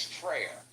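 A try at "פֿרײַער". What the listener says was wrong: But it's pronounced Fryer with that guttural R at the end.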